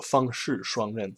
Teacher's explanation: You hear the fang and the shuang, the rhyme and the first tone. The flat tone is really obvious, and the shi and the ren have like a kind of a downward kind of feeling to it.